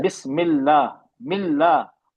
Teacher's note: हम बारीक पढ़ेंगे क्योंकि अल्लाह के नाम से पहले मीम पे जेर है